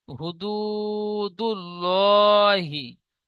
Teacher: এখানেও একই ইজরা করব, আল্লাহ শব্দের ডান দিকে জাবারের জায়গায় পেশ এসেছে, তো আল্লাহ শব্দের ডান দিকে পেশ এসেছে, তাই আল্লাহ লামকে পুর অর্থাৎ ল পড়তে হয় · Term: লাম পুর